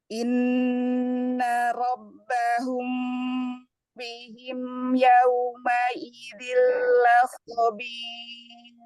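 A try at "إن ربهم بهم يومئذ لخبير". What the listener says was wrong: Masih ya, masih terasa seperti ir, masih ar itu ar ya. Ir, ir dia tipis ya.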